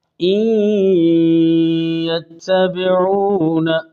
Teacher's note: یہ قریب الصفات ہیں، نون یا میں داخل ہو رہا ہے، تو اس ادغام کو ادغام صغیر متقاربین ناقص کہتے ہیں کہ نون کی صفت غنہ باقی ہے